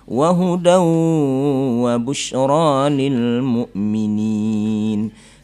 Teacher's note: Demikian juga wa huda wa busyra, hudan bertemu waw menjadi idgham bi gunnah